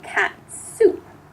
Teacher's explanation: the T keeps the tongue in the exact same place it should be for the S. So you're putting the T right next to the S.